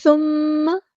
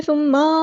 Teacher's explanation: یہ nasal sound ہے، یہ ناک میں گنگنی کر کے آواز ٹھہرائی ہے میں نے، جبکہ ثم اس طرح ہم نے لمبا کیا تو یہ غلط ہے۔